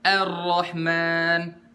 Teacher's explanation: Hamzah tetap dibaca tipis